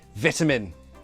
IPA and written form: vɪtəmɪn (vitamin)